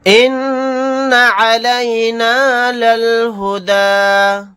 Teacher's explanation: نون کے اوپر تشدید ہے تو یہاں پر ہم غنہ کر کے پڑھیں گے